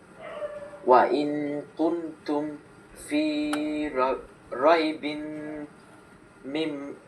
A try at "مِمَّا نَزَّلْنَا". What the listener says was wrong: মিম, এই যে একটু, মিম্মা নাজ্জালনা, এই যে দেখো মিমের পরে একটা আলিফ আছে, এই জন্য এক আলিফ টান হবে।